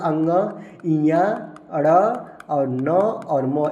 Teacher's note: पंचम वर्ण अंग ञ ण और न और म इसको नासिक व्यंजन बोलते हैं या इसका उच्चारण नासिका से होता है